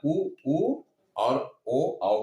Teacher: हमारा मुख वृत्त के समान हो जाता है, वृत्ताकार हो जाता है, इसलिए इन्हें वृत्ताकार स्वर कहते हैं और इन्हें अवृत्ताकार स्वर कहते हैं।